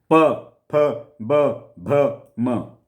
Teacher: बिना ओष्ठ मिलाए ये व्यंजन उच्चरित नहीं हो सकते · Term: पवर्ग